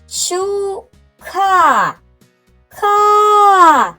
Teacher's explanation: звук К - приголосний звук. І в цьому слові він звучить твердо.